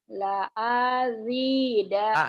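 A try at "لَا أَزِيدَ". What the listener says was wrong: A-nya pendek, yang panjangnya Z-nya doang. La azida.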